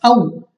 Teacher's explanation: और आगे हमारे पास औ, तो वाव साकिन से पहले जबर, तो यहाँ पे वाव लीन हमने बगैर खींचे बगैर झटके दिए नरमी के साथ मारूफ पढ़ना है, यानी जल्दी पढ़ना है, खींचना नहीं है।